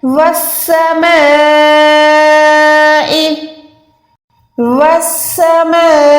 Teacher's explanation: اچھا جب بھی یہ بڑی مد آتی ہے, ایک ہوتی ہے بڑی مد دوسری ہوتی ہے ایسے چھوٹی مد, تو یہ والی بڑی مد ہے اس کو کم سے کم آپ نے 4 سیکنڈ میم والی زبر ماں کو یہاں پر آپ نے 4 سیکنڈ کھینچ کے پڑھنا ہے.